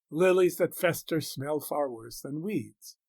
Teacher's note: The spondee, far worse, builds upon the stress on smell to strike home the point with three stresses together, whereupon the stress lets up on the I am than weeds, which is thereby felt to be less disgusting, embodying in the sounds the idea that even weeds are less offensive than festering lilies.